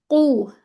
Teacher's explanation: हमारी जबान पीछे से उठ रही है और ये मुफख्खम लेटर है